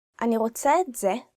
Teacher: when you say that, you should emphasize the word זה